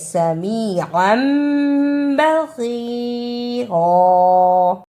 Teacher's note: تنوین کی آواز کو میم سے بدل کر پڑھنا ہے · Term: اقلاب